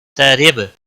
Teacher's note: را کو زیر کی وجہ سے باریک پڑھیں گے